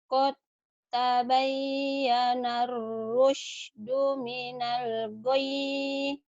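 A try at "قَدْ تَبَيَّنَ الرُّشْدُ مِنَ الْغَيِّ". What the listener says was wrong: Qad tabayyana ar-rusydu minal ghayy. Ghaynya jangan dipanjangin ya. Cuman membel doang. ke tempat tidur yang ada pernya ngemembel gitu. Bel, membel sekali doang. Minal ghayy. Enggak panjang ya. Karena enggak ada madnya. Minal ghayy.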